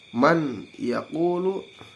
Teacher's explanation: dimasukkan dari mahraj Nun ke huruf ia itu yang ada didepannya dengan disertai dengan dengung selama dua harkat